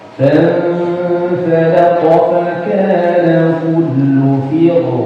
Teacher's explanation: roknya dibaca tafkhim atau tebal ketika antum waqaf dengan sukun. Berarti kalau dibaca فَانْفَلَقَ فَكَانَ كُلُّ فِرْ, bukan fir ya.